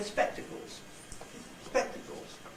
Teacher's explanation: if you listen very carefully, the syllable spec is not falling at all. It's just high.